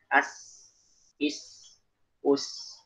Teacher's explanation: desisan yang ada di bagian gigi bagian bawah. Itu namanya sifat sofir.